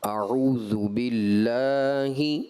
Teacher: شدت نہیں لے کر کے آئیں گے، لام میں شدت نہیں ہے، صفت توسط ہے